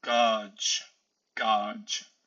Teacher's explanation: for the G, in the final position, it is usually ch, ch. So, gauge, gauge.